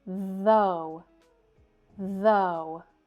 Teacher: Though, this word looks a lot like through, but it has the voiced th sound.